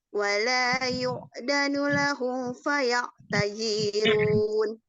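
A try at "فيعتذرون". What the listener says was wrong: Zinya pendek. Faya'tazirun. Zinya pendek langsung ke ru. Tazirun. Faya'tazirun.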